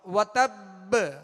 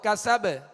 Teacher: اس با پر تشدید ہے، اس میں قلقلہ خوب ظاہر ہوگا